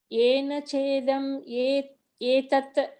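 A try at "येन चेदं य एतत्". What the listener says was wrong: Ya yetat. Ya is one word.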